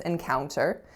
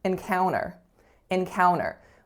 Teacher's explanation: there is no T being pronounced at all